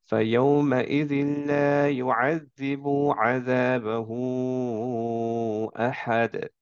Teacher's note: এখন মাদ সিলা কুবরা কাকে বলবো? যদি হচ্ছে এই মাদের পরে জাস্ট একটা হামজা আসে, যার ফলে আমরা এটাকে একটু বেশি টান দিয়ে পড়বো